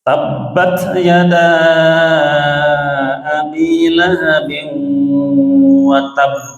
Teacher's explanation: tabbat itu harus ditahan karena pertama ba itu huruf syiddah, kemudian ada tasydid